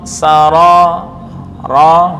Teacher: Sara itu getar cukup sekali, bukan dibaca sara itu kurang tepat, atau sawa itu juga kurang tepat.